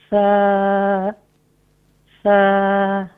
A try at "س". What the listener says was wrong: ابھی بھی تھوڑا سا کھینچ رہے ہیں دیکھیں.